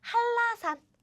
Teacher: But now, my smart, intelligent students, you know the secret to pronounce easily when you see 짜자자잔, these, this 니은, and 니을 meet, you know what happens. This 니은 sound disappears and it changes to L, double L, like 한라산. Do you see this?